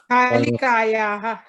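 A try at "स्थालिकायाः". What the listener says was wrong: Sthalika yaha. But it's a stha. There's a sa there. Sthalikayaha.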